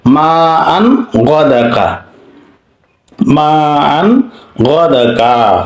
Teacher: তানবিনের পরে গাইন আসছে, এখানে ইজহার করতে হবে